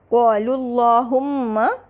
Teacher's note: یہاں پر کیونکہ اللہم سے پہلے ضمہ آ رہا ہے لہٰذا ہم نے اللہم کے لام کو مفخم پڑھا۔